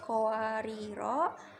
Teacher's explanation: Kemudian sama kowariro, kowa, wanya panjang matobi'i karena fathah bertemu dengan alif, dibaca panjang 2 harokat. Ri-nya ro tarkik tipis karena berharokat kasroh. Kemudian ri ini matobi'i berharokat kasroh bertemu dengan ya sukun, dibaca panjang 2 harokat. · Kemudian ri ini matobi'i berharokat kasroh bertemu dengan ya sukun, dibaca panjang 2 harokat. Ro-nya lagi ro tafhim tebal karena fathah, kemudian fathah bertemu dengan alif matobi'i, baca panjang 2 harokat